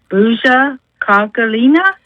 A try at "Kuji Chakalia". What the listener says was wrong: It's Kuji Chakalia. Kuji Chakalia. It starts with a K.